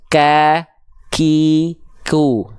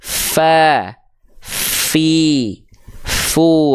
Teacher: Si hamsnya itu kadarnya bukan mengalir, tapi hanya berupa percikan-percikan nafas, hanya percikan nafas saja. Ya, jadi ketika kita lafalkan huruf ta, hanya kita percikan. · Untuk huruf ta dan huruf kaf, dia kadar nafasnya bukan mengalir. Si hamsnya itu kadarnya bukan mengalir, tapi hanya berupa percikan-percikan nafas, hanya percikan nafas saja.